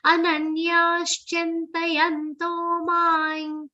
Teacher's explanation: Anuswar is pronounced like a nasal ya consonant.